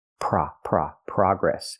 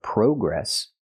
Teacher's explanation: In America, we use the open ah sound like hot and stop. Progress. We don't use the long O like no and go, progress.